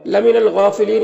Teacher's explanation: غین حروف مستعلیہ میں سے پر پڑھیں گے